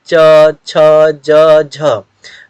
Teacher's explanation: जो च वर्ग है इसका उच्चारण तालु से होता है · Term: तालु व्यंजन वर्ण